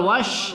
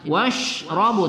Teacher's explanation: Washrabu tebalkan pada sifat tafasyi ya. Washrabu bu kita baca satu alif dua kali.